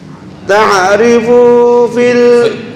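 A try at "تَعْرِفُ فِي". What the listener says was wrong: Fu kepanjangan, ntar berubah jadi jamak. Langsung ta'rifu fi.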